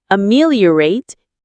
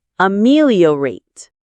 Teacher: The stress is on the second syllable, meal.